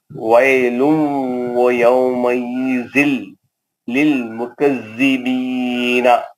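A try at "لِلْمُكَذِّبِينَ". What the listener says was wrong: ایک منٹ آپ روکے تو آیت کے ختم پہ اس کا زبر زیر پیش نہیں پڑھنا مکذبین نہیں پڑھنا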